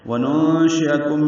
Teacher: وننشئکم میں نون ساکن کے بعد شین آنے کی وجہ سے اخفا ہے